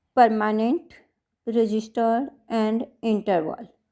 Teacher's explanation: trisyllabic words like permanent, registered and interval which receives the accent on the first syllable